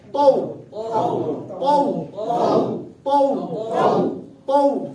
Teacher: اب اس کو ہم نے ایسے پڑھا تو، غلط، ہم نے کہنا ہے تو تو تو تو۔ اب دیکھو تا واو زبر تو، تو آواز کو لمبا نہیں کیا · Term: واو لین